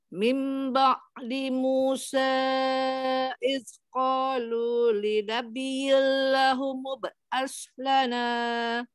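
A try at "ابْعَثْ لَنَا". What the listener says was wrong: Lahumu ba'as. Keluar ke lidahnya, bukan as.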